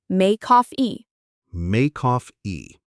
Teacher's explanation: For make coffee, we link the k sound.